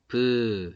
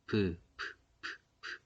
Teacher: 예삿소리는 나오는 숨이 특별하게 내가 더 많이 낸다, 더 적게 낸다라는 개념이 없어요. 그냥 편안하게 발음을 하는 거예요.